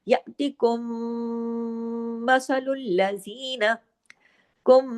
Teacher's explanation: جو میم ساکن ہے اس کے فوراً بعد میم مشدد آ گئی، تو یہاں پہ ادغام ہو گیا، ادغام شفوی ہو گیا، میم کا قاعدہ ہے اور میم مشدد ہے، تو یہاں پہ غنہ ہوگا بڑا اکمل.